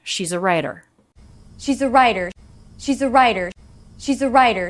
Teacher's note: the t here is a flap t because it comes between two vowel sounds so it's not a true tea but rather a flap of the tongue